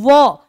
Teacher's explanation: हैं तो हमारा दांत हमारे होठ से टक्कर खाता है यानी व के उच्चारण में दंत का भी प्रयोग होता है और ओस्ट का भी प्रयोग होता है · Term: दंतोष्ठ